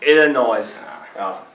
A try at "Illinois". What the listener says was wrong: Illinois. No, you said noise. Yeah, no, it's a silent S. Yeah, Illinois.